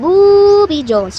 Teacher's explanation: words longer an 8-year-old child might say I am booy Jones stretching the B sound which is common in children with fluency disorder